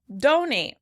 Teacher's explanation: In this case, the stress is on the first syllable.